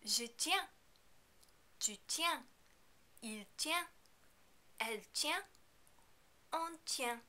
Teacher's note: you are not going to pronounce these final consonants because they are not followed by a vowel sound.